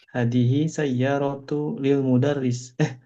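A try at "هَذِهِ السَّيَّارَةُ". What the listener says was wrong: Nah, jangan lupa tasydid dibaca ya. Hadhis sayyaratu. Hadhis sayyaratu.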